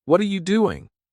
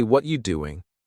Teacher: When native speakers talk, they don't say, What are you doing? They say, What you doing? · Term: connected speech